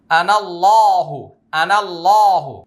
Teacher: আল্লাহ শব্দের উচ্চারণ মোটা হবে